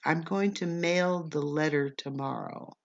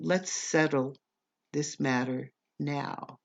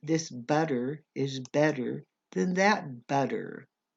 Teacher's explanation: when we have two t's in a word we almost always pronounce the two t's as a d